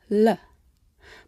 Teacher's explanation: The English L, for example, can be different depending on where it occurs in the word. At the beginning of a word like leaf, we use a light L, made with the tip of the tongue, l. But at the end of a syllable, like in feel, it's a dark L, ol.